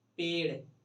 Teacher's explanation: जो जीभ है हम लोग का वो मुड़ के एकदम तालू को झटके से टच करता है और छोड़ता है, तो उसको बोलते हैं हम लोग उच्छित व्यंजन।